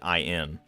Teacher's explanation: And we Americans at least rarely pronounce the ing. We just pronounce it in.